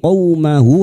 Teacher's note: qaw fathah bertemu wawu sukun kita lunakkan huruf lin